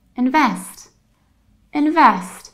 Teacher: not invest you don't have e but you have a and you don't stress the first syllable you stress the last syllable